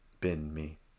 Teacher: been going up me going down